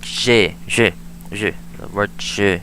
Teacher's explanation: J is that J sound, the voiced postalveolar fricative. Not J, it's J like in French, you know?